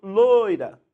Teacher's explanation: Quando eu falo loira, quase você não ouve o i. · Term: semivogal